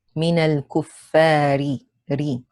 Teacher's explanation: Ra here has a kasra. It is light.